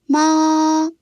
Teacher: The tone is high and level. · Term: first tone